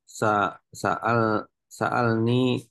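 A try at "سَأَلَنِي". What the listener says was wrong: Sa'alani, bukan sa'alni. Fathah. Karena dia itu apa? Fil madi. Sa'alani, bukan sa'alni.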